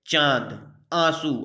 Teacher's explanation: इसमें जो है नाक से कम हवा निकलेगी मुख से अधिक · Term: अनुनासिक